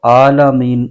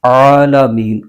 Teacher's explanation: आन को हलक के दरमियानी हिस्से से अदा करना है